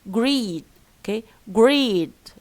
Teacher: D, which is a voiced consonant, prolongs the vowel before it.